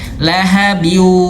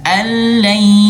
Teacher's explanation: Ha harus sengau. Jangan hanya sekedar ditahan.